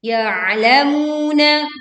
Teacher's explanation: Kita menekan ain sukun dengan menyempitkan pita suaranya sehingga suara terdengar lebih berat. Ya'lamuna, lalu kita membaca mu dibaca panjang 2 harokat.